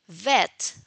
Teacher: there is vibration of the vocal cords. This is why it is called voiced labiodental fricative